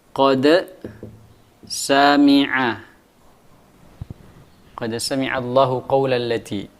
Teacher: Dal dengan sin berdekatan dengan makhrajnya, ya. Ini dalnya mati dan sinnya berharokat. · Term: mutaqaribaini shaghir